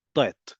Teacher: In Hebrew that was spoken for centuries by Jews in the Iberian Peninsula, in North Africa, in the Middle East, sounded like t. It was an implosive T sound rather than the sound we know from English and modern day Hebrew T.